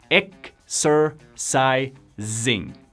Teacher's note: Se pronuncia exercising. Todos los sonidos de la S en esta palabra se pronuncia S, menos la última. Zing, con Z.